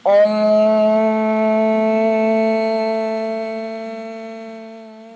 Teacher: the NG creates a nasalized sound so this really isn't coming through your mouth it's being pushed up through the Conch in your nose and